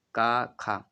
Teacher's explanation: जब आप क और ख बोले तो आवाज कहां से आप देखेंगे कंठ से आती है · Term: कंठ ध्वनियां